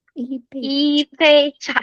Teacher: 一杯 is always fourth tone and first tone